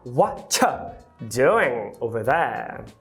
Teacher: Eu quero que você fale whatcha. Ou seja, você vai reduzir o you para um schwa e vai apagar o are. Então você vai falar whatcha doing over there.